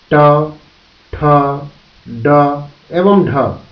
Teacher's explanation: वे व्यंजन ध्वनियां जिनके उच्चारण के समय जीभ का निचला भाग घूमकर ऊपर तालु को छूता है, जिससे अवरोध होता है, उन्हें मूर्धन्य ध्वनि कहा जाता है, जैसे ट, ठ, ड एवं ढ।